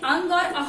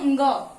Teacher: अंग और अह जो है, पीछे आपको ग और ह की ध्वनि सुनाई दे रही होगी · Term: अयोगवाह